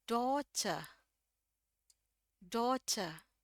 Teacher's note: Pokoknya pada insinya itu o ini o tapi kita panjangin do. Terus ini r-nya dibuang. Kenapa? Karena udah akhir kalimat ya. Jadi cuma dibaca daughter.